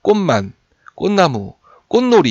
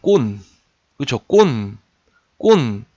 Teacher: 미음, 니은으로 시작하는 실질 형태소가 뒤에 오게 되면 이 앞에 있는 이 꽃이 꼰으로 바뀐다는 거예요. 이거는 뭐냐면 비음화예요.